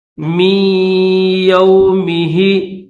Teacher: یہ جو نون ہے اس نون کو نہیں پڑھیں گے، صرف غنہ کریں گے۔